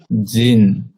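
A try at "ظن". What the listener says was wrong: জিন না জন, জন ধারণা।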